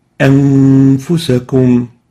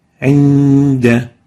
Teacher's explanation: You hide the oral articulation of the nun and preserve the nasal articulation of the nun, preserving or maintaining ghunna characteristic, the nasal tone, for 2 time units. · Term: Ikhfaa